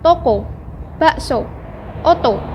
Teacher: Dilafalkan dengan cara menarik lidah jauh ke belakang dan ke tengah, disertai dengan menghembuskan udara keluar, sedangkan bentuk mulut dibundarkan. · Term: Fonem O